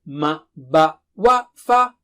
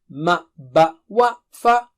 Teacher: ma, ba, wa, fa are from the lips